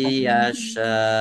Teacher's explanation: Masuk dengan mendengung yaitu mendengung ya. Langsung masuk ke huruf ya. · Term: idgham bighunah